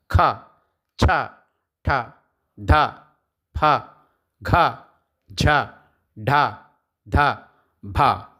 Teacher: తర్వాత మహాప్రాణ అక్షరాలు మహాప్రాణ అక్షరాలు అంటే ఖ ఛ ఠ ధ ప ఘ ఢ ధ భ వీటిని గట్టిగా పలుకుతాం కాబట్టి మహాప్రాణ అక్షరాలని వీటిని అంటారు